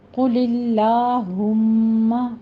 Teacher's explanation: قوف کو موٹا پڑھیں گے، آگے لفظ جلالہ باریک پڑھا جائے گا.